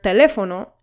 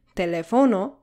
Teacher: has the stress syllable on the third to last syllable, the antepenultimate syllable. The accent mark on this syllable acts as a signal to let us know where the syllable stress is located in the word so that we can pronounce it correctly.